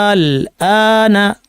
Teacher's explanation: এখানে টান হলো আলিফের কারণে, আর আলিফের পরে সুকুন থাকায় সেটা টানটা, আলিফের বেসিক টানটা বর্ধিত হয়ে গেল